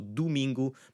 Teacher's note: the O's will end up sounding like ooh, like a U sound.